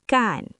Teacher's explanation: Disebabkan ra berada di akhir suku kata, ia berubah menjadi huruf N